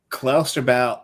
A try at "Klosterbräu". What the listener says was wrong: R, not L. R.